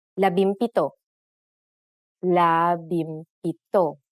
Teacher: If a P follows the NG connector, the NG becomes an M